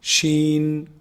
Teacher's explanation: actually pronounced from the middle of the tongue and the top roof of the mouth